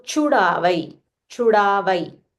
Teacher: you'll have to use Mahaprana cha.